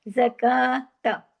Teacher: काफ को थोड़ा सा अलिफ के बराबर खींचना है लेकिन ता को नहीं खींचना